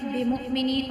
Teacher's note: وَمَا هُمْ بِمُؤْمِنِينَ، اب میم ساکن کے بعد با ہے، یہاں پہ بھی غنہ ہوگا اقفاء شفیع کی صورت میں بِمُؤْمِنِينَ، اور حمزہ ساکنہ پہ جو ہم جھٹکا دے کے پڑھیں گے